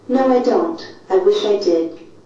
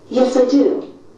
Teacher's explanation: Both will be read with falling intonation.